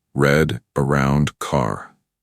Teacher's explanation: he curled his tongue slightly back without touching the roof